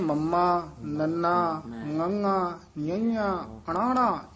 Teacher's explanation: ਇਹ ਪੰਜ ਅੱਖਰ ਨਾਸਕੀ ਹਨ ਜਿਵੇਂ ਨੱਕ ਚ ਬੋਲਦੇ ਆ ਥੋੜੇ ਜਿਹੇ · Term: ਨਾਸਕੀ ਉਚਾਰਨ